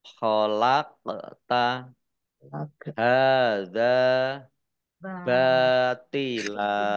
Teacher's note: qaf sukun, bacaan kolkolah atau bacaan dibaca memantul